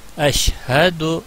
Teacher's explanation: ہا زبر ہا، یہ انتہائی حلق سے نکلتا ہے، یعنی سینے کی طرف سے سانس کو چھوڑتے ہوئے